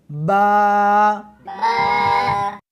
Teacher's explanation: اس حرف کو دونوں ہونٹوں کے ساتھ ملا کر پڑھیں گے